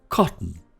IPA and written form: ˈkɒt.n̩ (cotton)